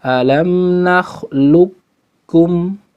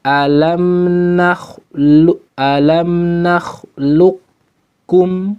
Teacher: Kalau yang pertama huruf qafnya hilang sama sekali, alam nakhluqukum. Kalau yang kedua sifat qaf ada dikit